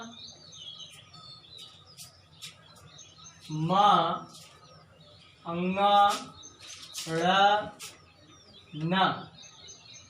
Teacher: म अंग ण न इन सभी का उच्चारण स्थान नासिका होता है, अर्थात नाक। शायद इसको बोल के भी देख सकते हैं या तो नाक से आवाज आती, इसलिए इसको नासिका कहा जाता है।